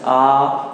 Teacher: जब हम बड़ा आ बोलते हैं जैसे आ, तो हमारा मुख क्या है आपका पूरा लगभग खुला रहता है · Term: विवृत स्वर